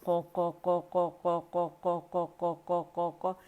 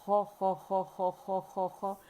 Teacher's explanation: تینوں کا ایک ہی انداز ہے، او کی ساؤنڈ آئے گی، موٹی ساؤنڈ آئے گی